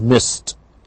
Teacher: after p, k, f, s, all of these unvoiced sounds, we get merely the t sound